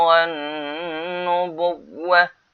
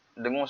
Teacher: Wan dengung sebab nun sabdu ni.